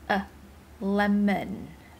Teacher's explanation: the schwa sound in English, which is a neutral vowel. It sounds like a, but a bit shorter and swallowed, and it is the sound of the letter O in lemon.